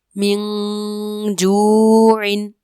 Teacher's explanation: نون ساکن کے بعد جیم حروف اخفا میں سے ہے جس کی وجہ سے غنہ کریں گے